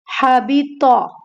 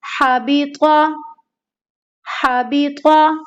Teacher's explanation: ये ता नहीं है, त्वा है, तो इसे हमें क्या करना है, मोटा पढ़ना है, यानी कि पुर पढ़ना है